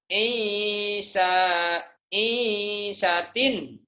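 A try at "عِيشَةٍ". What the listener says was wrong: Aisyatin latihan shin. Ain sama shin. Aisyatin. Aisyatin. Ain dan shin.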